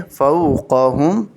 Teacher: क़ाफ़ को मोटा करेंगे